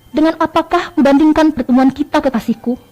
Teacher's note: Intonasinya gunakan intonasi bergelombang karena kalimat tanya.